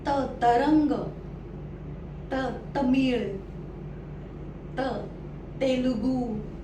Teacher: आता त चा उच्चार हा थोडासा, आधी जो ट चा उच्चार एकदम टाळ्याला होत होता, आता त, त च्या ओळीचा उच्चार थोडासा पुढे होतो, थोडासा पुढे